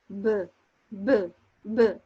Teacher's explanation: The vocal cords vibrate for b but not for p